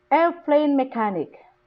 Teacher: The stress is on the word air, on the first word.